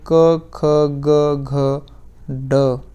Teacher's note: क वर्ग के अंदर क, ख, ग, घ, ड, यह कंठ गले से बोले जाते हैं।